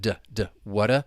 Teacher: tongue's just flapping against the roof of your mouth